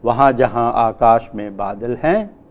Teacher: And in the end, the sentence, the pitch falls in the sentence, which means that it is a declarative type of sentence. In the first half, the pitch pattern goes up, वहाँ जहाँ आकाश में बादल हैं, which indicates continuation of the speech.